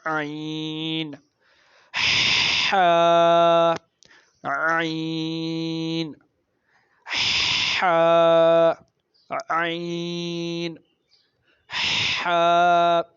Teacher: وسطی حلق یعنی جو گلے کے درمیان والا حصہ ہوتا ہے، حلق کا درمیانی حصہ، اس سے بھی 2 حروف ادا ہوتے ہیں